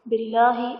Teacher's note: باللہ اسم جلالت اللہ عز و جل کے لام سے پہلے زیر ہے، یہاں پر لام باریک پڑھا جائے گا۔